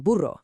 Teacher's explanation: This is that powerful vibrating trill you use for a double R, like in buro, or anytime a word starts with an R. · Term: strong R